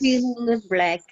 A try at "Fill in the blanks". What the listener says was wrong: In the blanks. In the blanks. Blanks. There is an N, a K, and S. Blanks. Blanks.